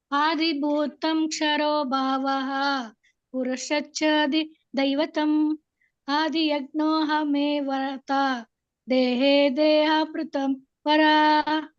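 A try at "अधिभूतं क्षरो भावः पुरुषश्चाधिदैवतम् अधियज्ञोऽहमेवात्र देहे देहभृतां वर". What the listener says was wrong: ನಿಮ್ದು ಅದೇ ಮಿಸ್ಟೇಕ್ ಆದಿಭೂತ ಇಲ್ಲ ಅದಿಭೂತ ಆದಿ ಯಜ್ಞ ಅಲ್ಲ ಅದಿಯಜ್ಞ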